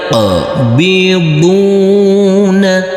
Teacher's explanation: huruf qof kita pantulkan karena ini adalah bacaan qalqala huruf q yang bersukun ini dan huruf BD kita baca panjang